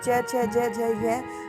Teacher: इसका उच्चारण स्थान क्या होगा? तालु होगा। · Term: च वर्ग